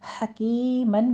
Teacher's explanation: حکیمن میں بھی ہا وسط حلق سے ادا کریں گے اور کاف باریک پڑھتے ہوئے یا مدہ ادا کریں گے ، پھر آخر پر ہم وقفے ابدال کر لیں گے، صرف